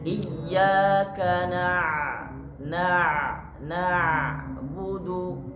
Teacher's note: huruf ain ketika dia sukun maka dia ada sifatnya sendiri, Pak. Nah, sifatnya adalah harus ditahan.